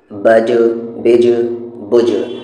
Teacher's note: بج، بج، بج، با بھی قلقلہ لیٹر ہے لیکن یہاں پر با پہ قلقلہ نہیں ہو رہا ہے کیونکہ وہاں پر با پر سکون نہیں ہے، وہاں پر با پہ زبر ہے۔ اور جیم پر قلقلہ ہو رہا ہے کیونکہ جیم قلقلہ لیٹر ہے پلس اس پر سکون ہے